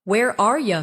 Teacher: Where are you from? In fast speech, are you often sounds like are ya.